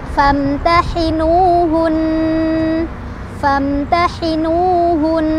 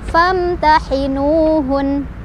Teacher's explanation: Tetapi ketika kita berhenti, nunnya kan jadi sukun, tapi sukunnya ini tetap ada tasydidnya, tasydidnya nggak hilang. Maka karena nun bertasydid itu ada gunnahnya, maka tetap ada dengungannya